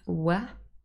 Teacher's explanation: And if you watch my lips, w, both my lips are involved in the sound production